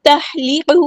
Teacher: ہا کو وسطی ہے لیکن مڈل تھروٹ سے ادا کرنا ہے